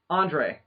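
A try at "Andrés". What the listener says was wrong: Just for future references, my name ends in an S. Andres. Technically, it's pronounced Andres, but I've throughout the years I've heard people refer to it as Andres. Well, if you add like a Spanish accent to it, but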